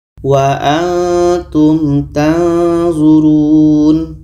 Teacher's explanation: ketika sebut huruf nun kita sudah merasakan huruf d maka akan terhasil di situ bunyi samar